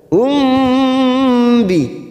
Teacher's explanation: mim sukun bertemu ba biasanya mim sukun kita baca jelas sekarang kita dengungkan selama tiga ketuk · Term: Ikfa Syafawi